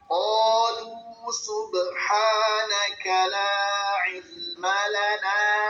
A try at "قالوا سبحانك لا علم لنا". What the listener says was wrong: Mad jaisnya kurang panjang Ustaz. Qalu subhanaka la ilma. La ilma lana, iya. Itu ain bukan hamzah, saya yang salah.